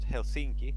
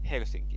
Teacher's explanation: the stress is always every single time on the first syllable so it's not Helsinki it's Helsinki all the